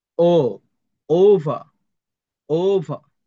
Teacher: ইংরেজিতে আপনার যখন ব্রিটিশ উচ্চারণ করবেন, যে শেষের আর যে উচ্চারণ হবে না